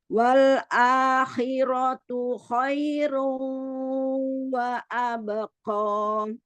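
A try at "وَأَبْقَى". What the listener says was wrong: Jangan wa abqa. Jangan monyong, jangan maju karena Wa abqa. Ko buka aja. Wa abqa. Enggak, jadi kalau misalnya dia mau tebal ya, dibuka makhrajnya itu, qaf itu.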